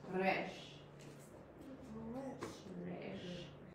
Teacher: Is it rolled R? It's like a slightly rolled R. It's like in Spanish.